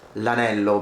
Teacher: Now, normally you would say il anello, but when a word begins with a vowel, we tend to remove the I at the beginning and say just l'anello because it's easier to say